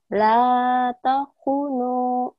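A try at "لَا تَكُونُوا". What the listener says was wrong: La takunu. Eh, hu-nya panjang ya. La takunu.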